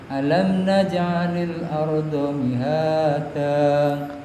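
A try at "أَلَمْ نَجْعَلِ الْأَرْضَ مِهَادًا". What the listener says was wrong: Alam naj'alil arda ra-nya dulu disempurnakan. Ra itu di situ tebal karena ra tafkhim. Jadi posisinya alam naj'alil arda baru masuk ke do-nya.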